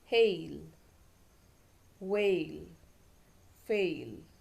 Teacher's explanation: अब आप देखेंगे इसमें एक तो ए साउंड है और साथ में ए के साथ में वावल ग्लाइड होती है। ग्लाइड मतलब एक साउंड से दूसरे साउंड पे चला जाता है ये।